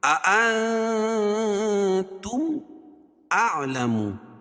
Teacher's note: نون ساکن کے بعد حروف اخفا کے 15 حرفوں میں سے تا ہے، اس کو ناک میں آواز کو چھپا کر پڑھیں گے۔